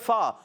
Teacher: اوپر والے دانتوں کے کنارے نیچے والے ہونٹ کے تر حصے سے لگتے ادا ہوتا ہے